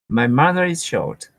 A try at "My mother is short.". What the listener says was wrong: So did we hear the difference here and how my mother is short? Is there really a reason that you're pausing there? You don't need to. a short sentence too. It's only 4 words. So my mother is short.